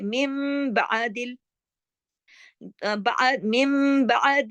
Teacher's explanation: اقلاب کا قاعدہ لگ جاتا ہے یعنی پلٹ جاتا ہے نون بدل جاتا ہے کس میں میم میں. تو یہاں پر اس من کو ہم میم کر دیں گے میم بعدل من بعد الغم.